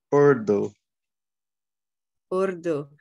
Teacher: in Urdu and in Hindi, there's a backward R. The tongue might even curl here, backward